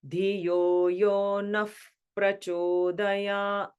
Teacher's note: when you combine those sounds, the Naha becomes Naf